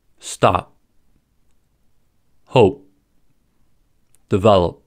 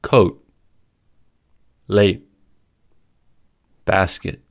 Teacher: To hold a sound, we start to say the sound by blocking off the airflow where the stop normally happens, but we don't release the air. The final plosives in these words can be pronounced in 2 ways: released, audible, or unreleased, inaudible.